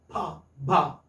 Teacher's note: Lips are the primary articulators. Lower lip and the upper lip. Besides, they are plosives. They are stops. You like you have your breath inside your stomach, and then all of a sudden you release it.